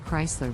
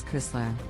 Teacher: the correct pronunciation is Chrysler with the emphasis on the first syllable